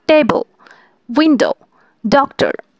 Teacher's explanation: প্রথম সিলেবালে চাপ বেশি পড়ছে এবং পরেরগুলোতে পড়ছে না বা কম পড়ছে। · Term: প্রথম সিলেবাল এ স্ট্রেস